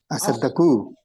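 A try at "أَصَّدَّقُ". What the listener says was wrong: আসসাদ্দাকু, দুইটাই কিন্তু ডাবল, আসসাদ্দাকু। আসসাদ্দাকু নাসাদ্দাকু। বুঝতে পারছেন কিভাবে পরিবর্তনটা হয়েছে? না, স্পেশাল না, মানে এটা কোরআনে প্রচুর ব্যবহার আছে। কোরআনে পড়ছেন না ইত্তাইয়ারা, এই যে মূল শব্দটা কি? তাতাইয়ারা, তাতাইয়ারা থেকে হয়ে যায় ইত্তাইয়ারা। কিভাবে হয়?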